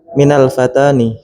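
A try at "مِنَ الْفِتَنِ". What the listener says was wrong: Kok Fatan? Fatan itu pemuda loh. Jamaknya fitnah. Fitan. Minal fitani.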